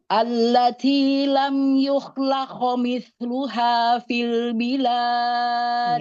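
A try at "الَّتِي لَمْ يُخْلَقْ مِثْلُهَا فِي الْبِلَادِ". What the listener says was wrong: Ya, berarti jaharkan lagi yang qafnya. Yukhlaqo. Qalqalahnya tebalkan lagi.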